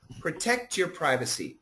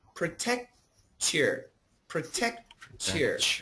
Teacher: the T and the Y can combine to a CH